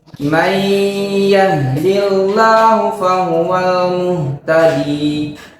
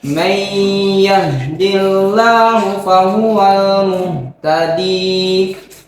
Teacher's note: Idgham bigunnah yaitu dengan dengung.